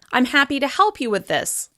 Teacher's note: you signal that you're done speaking with a fall in pitch